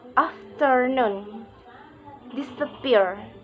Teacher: Secondary stress is on the first syllable, and primary stress is on the third syllable. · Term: Stress pattern 6